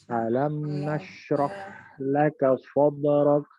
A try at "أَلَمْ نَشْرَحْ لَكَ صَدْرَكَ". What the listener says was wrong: Nah, jadi mimnya itu alirkan sedikit, jangan kelamaan. Alam nashrah, nah itu kelamaan. Jangan membaca alam nashrah, alam nashrah. Itu nggak dibaca dengan tawasud. Itu dibaca dengan syiddah. Ingat, mim punya sifatnya apa? Mim sifatnya apa? Bainiyah.